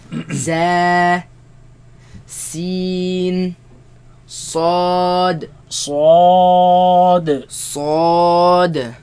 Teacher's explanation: They come from the tongue placed behind the bottom teeth. Right? Some scholars, they consider the tip of the tongue placed behind the bottom teeth, but the sound comes from between the tongue now and the empty space between the teeth and the tongue.